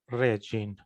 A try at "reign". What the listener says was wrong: Rain. Rain. The G is silent. Rain.